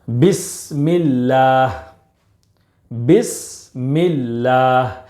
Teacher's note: لفظ اللہ کے لام سے پہلے زیر ہے، اس لیے باریک پڑھیں گے یعنی پتلا پڑھیں گے۔ بسم اللہ، میں اللہ ایسا نہیں پڑھیں گے، بلکہ بسم اللہ۔